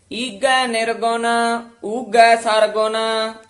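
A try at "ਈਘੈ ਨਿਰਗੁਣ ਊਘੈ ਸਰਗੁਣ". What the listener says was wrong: ਈਗੈ ਗਗਾ ਨਹੀਂ ਲਾਉਣਾ ਘਗਾ ਲਾਉਣਾ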